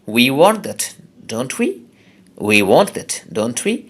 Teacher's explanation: ক্ষেত্রেও মানে শেষে আবার উইটা আসলো, সুতরাং শুরুতে এবং শেষে আছে, দুই জায়গাতেই আমাদের উচ্চারণ করতে হবে দীর্ঘস্বরে উই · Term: লং সাউন্ডে